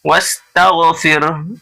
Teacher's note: یہ را ساکن سے پہلے دیکھیے زیر ہے اس لیے یہ را ساکن باریک ہو رہی ہے